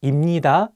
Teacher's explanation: if you pair 비읍 with 니은, you can pronounce 비읍 as 미음. Finally, you'll get 입니다 instead of 입니다.